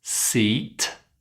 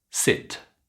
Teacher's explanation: Did you get that e lovely and long and the short I super short?